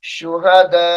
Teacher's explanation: वक्त की हालत में हमजा को छोड़ देंगे